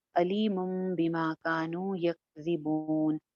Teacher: اس کا مطلب یہ ہوتا ہے کہ یہاں پہ میم پڑھنی ہے، تو یہاں پہ علی مم ہو جائے گا، علی من کی بجائے علی مم بما کانو ہو جائے گا. علی مم ایک الف کے برابر غنہ بھی ہوگا